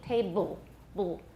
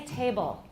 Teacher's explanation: Absolutely no vowel, then we have a syllabic L.